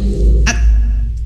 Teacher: Kalau huruf kaf ini ya ibu bapak, dia mengalirkan anginnya itu ditahan dulu gitu, baru dialirkan ya.